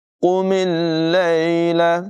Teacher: قاف کی آواز پر ہوگی، میم کو لام کے ساتھ ملائیں گے